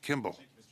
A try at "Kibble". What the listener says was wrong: Kibble, no M. Same as dog food, no M.